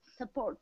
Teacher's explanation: So this unstressed syllable with the schwa sound can be in the beginning of the word.